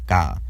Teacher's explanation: the unvoiced velar stop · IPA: /k/